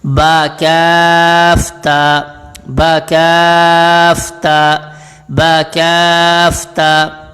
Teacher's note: کاف کو لمبا کرنا ہے، با کو اتنا لمبا نہیں کرنا، تا کو بھی اتنا لمبا نہیں کرنا، صرف ایک الف کی مقدار لمبا کرنا ہے